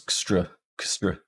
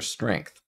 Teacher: the S-T and R together are going to form the onset of our second syllable. And that will connect up to the syllable boundary.